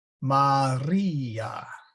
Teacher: the R is rolled a bit, similar to Spanish.